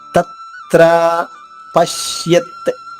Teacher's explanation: తత్రా అంటే తా నొక్కి చెప్పాలన్నట్టు అర్థమవుతుంది కదా. రెండు తాలకి సరిపడే ఉచ్చారణ ఇవ్వాలి. తత్ర పశ్యత్ పాపైన ఆఘాతం ఉంది. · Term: ద్విత్వము